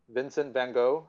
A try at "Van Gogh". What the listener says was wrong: It's pronounced like you're saying Hof, like Van Hof. You don't pronounce the G.